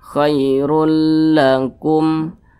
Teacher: Cara bacanya dimasukkan dengan tidak menyertai dengung begitu. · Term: idgham bila gunnah